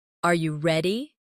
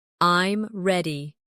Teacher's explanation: your voice often goes up at the end of a question, Are you ready? and goes down at the end of a statement